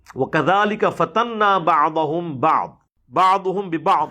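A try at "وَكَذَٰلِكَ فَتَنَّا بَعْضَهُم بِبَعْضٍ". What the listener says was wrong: اس کو 2 دفعہ پڑھا اور دونوں دفعہ ہی غلطی کی، ایک دفعہ با چھوڑ دی اور ایک دفعہ زبر کی بجائے پیش پڑھ دیا، لیکن بہرحال عین کو فل توجہ سے ادا کیا۔ امید ہے یہ 1 درجن پھکیاں کافی رہیں گی۔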